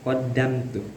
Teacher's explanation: Qaddamtu ini ada izhar syafawi karena ada mim mati menghadapi huruf ta. Cara bacaannya itu tidak boleh didengungkan. Qaddamtu jadi harus jelas.